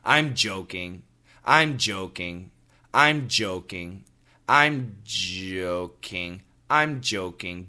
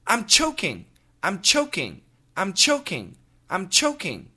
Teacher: I'm joking in the back of the throat with the vibration. I'm choking in front of the mouth with the air.